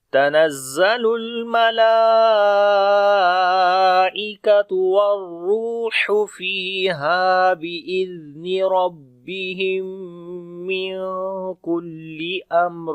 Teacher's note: میم ساکن کے بعد میم آ گیا تو ادغام شفوی ہوگا، تو آواز کو ناک میں لے کر جائیں گے، غنہ کریں گے